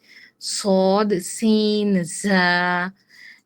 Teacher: 12 নম্বর মাখরাজ, এটা আমরা লোয়ার ইনসিসর্স এর হেল্প নিব, ওকে? জিহ্বার আগা সামনের নিচের দুই দাঁতের আগার সঙ্গে লাগিয়ে উচ্চারিত হয়